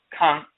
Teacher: The term Kan in the Tree Akan language means to emit a sound, speak, say, tell, spelled K-A. With the nasal A, it's Kan. Instead of Ka, it's Kan. And you can write it with a K-A with the descriptive symbol above the A.